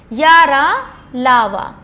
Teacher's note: इनका उच्चारण स्वर और व्यंजन के बीच की स्थिति जैसा होता है। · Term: अंतस्थ व्यंजन